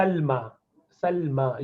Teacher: you pronounce alif at the end, Salma, not long alif but a short alif